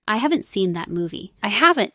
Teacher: So now it's really going up on haven't, and not too much on seen movie.